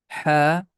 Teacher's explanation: The name of this letter is ha. This sound is coming from the middle of the throat. That's a sharp and clear sound.